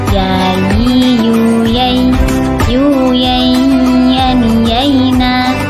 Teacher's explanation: Huruf ya yaitu dengan keluar dari tengah lisan disentuhkan dengan langit-langit.